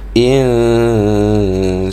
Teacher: Ikhfa haqiqi, maka kena dengung dia dan disembunyikan nun itu di dalam huruf sin. Jadi nun tu seolah-olah tak jelas sebutan dia.